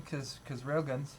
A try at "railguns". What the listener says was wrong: Railguns. Sound like you're saying real guns. Railguns.